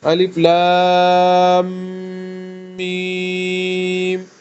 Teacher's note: مد کو 3 الف کی مقدار کے برابر آپ نے لمبا کرنا ہے